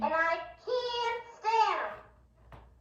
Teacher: this actress is raising the vowels of the words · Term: vowel raising